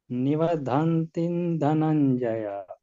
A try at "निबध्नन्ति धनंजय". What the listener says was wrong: निबद्धन्ति नहीं है, निबध्नन्ति।